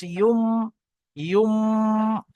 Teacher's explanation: যখন মিম উচ্চারণ করা হয় তখন দুটো ঠোট বন্ধ হয়ে যায়।